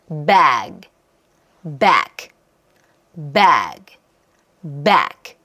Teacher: 그래서 앞에 있는 몸소리가 살짝 길어지는 느낌이 있어요. 그리고 큰 사운드 무성음으로 끝나는 경우에는 소리의 느낌이 어떠냐면 좀 정내미 없이 떨어지는 느낌이 있어요.